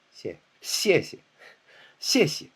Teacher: 谢, followed by another 谢, but it's not 谢, 谢, 谢, 谢, it's 谢, 谢谢, 谢谢. The second 谢 is very light, toneless. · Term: neutral tone